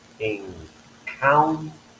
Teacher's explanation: And encounter, the second syllable, the K is aspirated because it's a K, it's at the beginning of the syllable, and it's stressed.